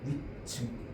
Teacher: 뒷말의 첫 소리가 된 소리로 안 나요. 거센 소리로 나잖아